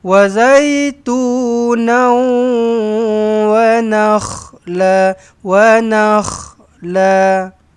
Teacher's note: Muncung jumpa dengan wau. Sambil-sambil tu dengungkan sekali eh. Idghama alghunnah.